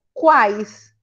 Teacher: o U é semivogal, o A é vogal e o I é semivogal. Tem vibração nasal? Não tem. Não tenho nem a presença do M, nem do N e nem do tio. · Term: tritongo oral